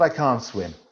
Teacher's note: in the second part of the sentence it's negative and it's an extended vowel sound